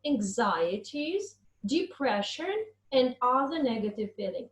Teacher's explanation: with the rising tone anxieties depression and other negative feelings and only the last unit is pronounced with the falling tone · when you add things all the elements are pronounced with the rising tone anxieties depression and other negative feelings and only the last unit